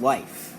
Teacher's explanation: we'll normally use the uh sound as the on glide when the I diphthong comes before a voiceless sound